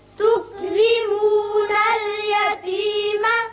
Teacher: یہ را باریک ہوگا، نیچے زیر ہے. یہاں میم پر زبر اس صورت میں آپ پڑھیں گے جب اگلی آیت سے ملانا چاہیں گے، لیکن وقت کی صورت میں میم ساکن.